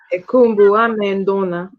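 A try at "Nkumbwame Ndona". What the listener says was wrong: Because here you have a vowel contraction. U and A. Yeah? Let's go Kumbwame.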